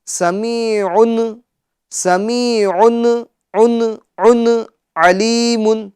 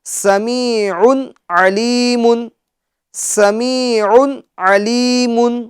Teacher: اچھا، اس میں ہمیں اس بات کا بھی خیال رکھنا ہے کہ سمیع، یہ تنوین، کیونکہ تنوین کی جو آواز ہے وہ نون ساکن کی طرح ہوتی ہے، ان، تو یہ جو نون ساکن کی آواز ہے تو اس نون ساکن کے اندر قلقلے کی آواز پیدا نہیں ہونی چاہیے